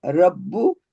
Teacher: ये शदीद का आया साइन, तो इसको हम 2 मर्तबा पढ़ेंगे। बा होंठों से अदा होगा। रा फता बा सुकून, रब बा दम्मा बू, रब्बू